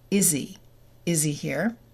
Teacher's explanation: The first consonant sound for each one will be deleted. So instead of is he here, it would be is he.